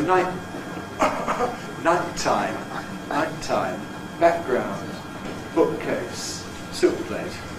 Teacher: the first plosive is voiceless, sometimes native speakers use a glottal stop instead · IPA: [ˈnaɪʔtaɪm]